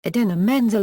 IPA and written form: ɪˈdiːnə mɛnˈzɛl (Idina Menzel)